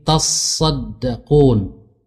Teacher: Taknya tadinya 2, tatasaddaqun. Nah, salah satunya dilebur atau idgham ke huruf sad, sehingga sadnya menjadi tasydid, sehingga menjadi tasaddaqun. · Kalau kita baca tasaddaqun, maka asalnya adalah tatasaddaqun. Kemudian salah satu huruf taknya melebur ke huruf sad. Taknya tadinya 2, tatasaddaqun.